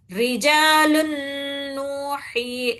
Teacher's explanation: نون ہے وہ پوری طریقے سے آگے آنے والے نون میں مل جاتا کامل طریقے سے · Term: ادغام